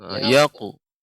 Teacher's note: ketika qalqalah pada huruf qaf jangan sampai juga berubah jadi huruf qa